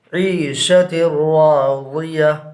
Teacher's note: یہاں پر بھی تنوین کے بعد حروف یرملون میں سے را ہے، لہٰذا یہاں پر ادغام بلا غنہ ہوگا، یعنی تا کو را سے ملا کر پڑھیں گے